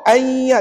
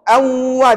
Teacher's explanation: dengung tapi dengungnya tidak masuk dalam rongga hidung sangat di tengah-tengah